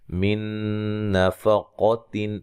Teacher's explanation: یہاں نون ساکن کا ادغام ہے، غنہ کر کے پڑھیں گے، ادغام مع الغنہ ہے۔ نفق، قاف کو موٹا ادا کریں گے۔